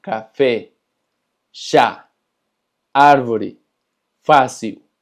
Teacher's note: el acento agudo se pronuncia abierto